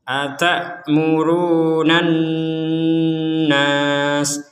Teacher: nan di rongga hidung kita ada dengungan